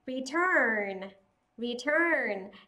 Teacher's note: Trọng âm rơi vào âm tiết thứ hai, âm UR sẽ được viên âm là ơ dài.